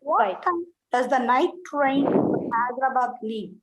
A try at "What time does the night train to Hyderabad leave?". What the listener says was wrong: Very good. Next one.